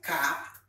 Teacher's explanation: Active articulator is the tongue body and the passive articulator is the soft palate. English velar sound includes k, g, and ng.